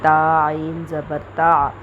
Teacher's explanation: تا عین کو حلق سے نکالیں گے